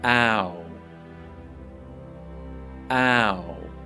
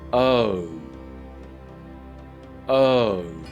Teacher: Both of these sounds sound like they are falling sounds, that they start high and finish low. The second sound, O, sounds like you've just realized something.